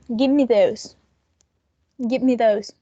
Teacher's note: It has a stress, a primary stress, but the most important element, like we already know, it's nucleus, that in this case is those. So the head is going to begin from give, and it's going to end in me.